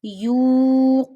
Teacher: I am stretching you because there is a pesh before waw sakin. When pesh come before waw sakina, you stretch waw up to one finger. · Qaf is also a mustalia letter, which is always read in Quran with a thick voice, and in noon there is a waw madda again.